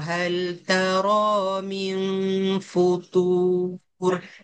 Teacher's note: futur tebalkan ta tu dan panjang